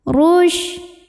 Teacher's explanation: dibunyikan secara tafkhim karena ro ini berbaris dah barisnya di atas bacanya tebal ya pangkal lidah e terangkat